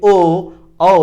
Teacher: इनकी संख्या 2 है और ये ओ औ है, ये कंठोष्ठ हैं। ये कंठ और ओठ से बोले जाते हैं। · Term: कंठोष्ठ स्वर